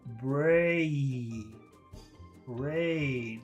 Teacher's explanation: it's actually two sounds it's a e brain brain